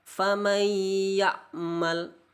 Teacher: Contoh famay ya'mal itu tidak boleh, harus ditahan 2 harokat. Famay ya'mal harus ditahan 2 harokat, tidak boleh tergesa-gesa karena wajib didengungkan, namanya juga idgham bi gunnah.